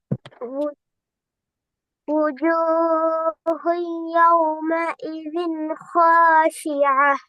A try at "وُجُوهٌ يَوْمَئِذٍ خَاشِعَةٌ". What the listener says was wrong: இந்த ஹாவை நீட்டின அளவு தான் ஜீவன் நீட்டணும். ஆனா நீங்க ஹாவை சரியா நீட்டினீங்க, ஜீமை கூட நீட்டுறீங்க.